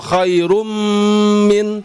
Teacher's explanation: Tanwin bertemu mim. Ya, suara tanwin dilebur ke huruf mim. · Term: Idgham bighunah